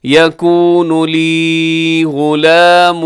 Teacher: یہاں غلام پہ ادغام ہے غنّے کے ساتھ